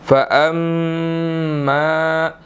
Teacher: میم مشدد ہے، یہاں پر ہم نے غنہ کرنا ہے، ٹھیک ہے، ناک میں آواز جانی چاہیے